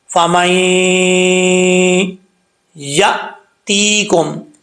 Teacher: جب میم کو یا سے کنیکٹ کریں گے، ملائیں گے، تو یہاں پر ایک الف کی مقدار غنہ ہوگا، اور بیچ میں جو نون ساکن ہے یہ گر جائے گا. اس کو نہیں پڑھیں گے.